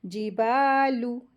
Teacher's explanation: الف مد آئی ہے با کے ساتھ تو اس کو 2 حرکت کھینچی پڑیں گے